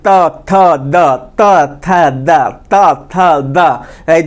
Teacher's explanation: त थ द ध न है तो इसका उच्चारण स्थान दांत है, दांत के स्पर्श से होता है · दोनों दांत के बीच में जीभ आ रहा है ना जी